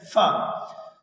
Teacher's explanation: جب ہم چوتھا حرف ادا کرتے ہیں یعنی ف تو سامنے والے اوپر والے دانتوں کی نوک نیچے والے ہونٹوں کے اندرونی حصے سے آ کر ٹچ کرتی ہے تو ادا ہوتا ہے ف۔